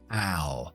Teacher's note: House o U normalmente nos hace el sonido AO, un diptongo donde abrimos mucho. AO. H sin voz.